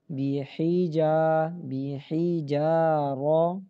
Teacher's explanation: بیحی، جیم الف زبر جا، جو کو موٹا نہیں کرنا، جا، بیحی جا، را زبر را، بیحی جا را. ہا کو جیم کے ساتھ نہیں ملانا بیٹا، بیحج نہیں پڑھنا